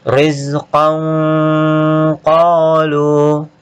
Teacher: fathatain ketemu qaf didengungkan, disamarkan dan didengungkan